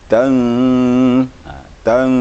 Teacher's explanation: nun mati bertemu zai, ikhfa hakiki. Dia sedikit lagi disamarkan sedikit lagi.